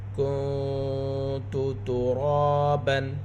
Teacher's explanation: را کو پر پڑھیں گے، را کے اوپر زبر ہے، ساتھ الف مدہ۔ را کی آواز کو 2 حرکات کے برابر کھینچ کر پڑھیں گے۔ با کے اوپر 2 زبر کی تنوین۔